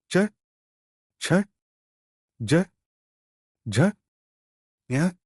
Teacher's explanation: दूसरा समूह चवर्ग च छ ज झ ञ इनका उच्चारण तालों से यानी मुंह की छत की सहायता से होता है।